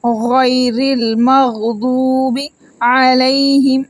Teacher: ضاد کو بھی موٹا پڑھیں گے، واو کو 1 سیکنڈ کے لیے لمبا کریں گے، واو مدہ ہے، غیر المغضوب علیہم۔